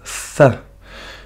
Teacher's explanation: On peut prononcer comme si on avait un cheveu sur la langue. Il faut prononcer un S avec la langue entre les dents.